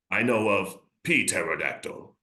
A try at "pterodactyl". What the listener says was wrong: Oh, pterodactyl, but the P is silent.